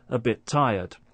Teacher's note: Also, another form of linking is when one word ends in a consonant sound and the next begins with a consonant sound, and when that happens, we don't hear two separate consonant sounds. We just hear one.